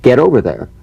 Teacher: the final T, when it's followed by a word beginning with a vowel, again, it becomes, in effect, a medial T. There's a vowel on both sides of it, so it gets softened to a D.